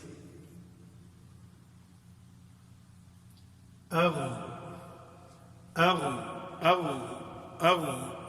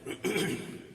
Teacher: اغ اغ اغ، تو یہ غین کے مخرج میں جو کہ ہم نے ادنی الحلق پڑھا ہے، تو ادنی الحلق بالکل آپ دیکھیں گے کہ حلق کے اس بالکل ابتدائی حصے پہ جا کے تو آواز ٹھہرتی ہے